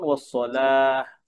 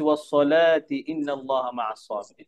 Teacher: আর ওয়াসসালা থামলে কি হবে, সামনে এই যে এটাকে বলে তা মারবুত, কি বলে, তা মারবুত। আমরা যখন এই তাতে থামবো তখন এই তার আওয়াজ হা হয়ে যাবে, যেমন ওয়াসসালাহ।